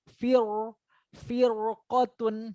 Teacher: ro kan makhorijul hurufnya adalah ujung lidah ketemu langit-langit.